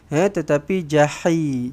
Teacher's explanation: Pastikan baca dengan ha pedas. Bukan ha simpul. Bukan jahi jahi tetapi jahi.